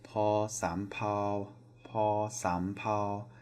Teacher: This is also a P sound, and it is paw sam pao, paw sam pao. So paw rising, sam, and then flat pao